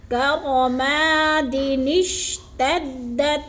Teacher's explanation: الف کے اوپر کوئی حرکت نہیں ہے یعنی زبر زیر نہیں ہے. تو دال کو شین کے ساتھ جوڑتے ہوئے درمیان میں اس چھوٹے سے نون کو ادا کریں گے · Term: نون قطنی